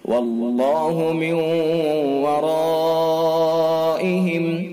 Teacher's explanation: تو یہاں اللہ کا لام ہے، اس سے پہلے واو کے اوپر زبر ہے، لہذا اللہ کے لام کو پر یعنی منہ بھر کے پڑھیں گے. واللہ من ورائہم، نون ساکن ہے، نون ساکن کے بعد یا واو میم نون میں سے واو ہے، ادغام ناقص بالغنہ ہوگا.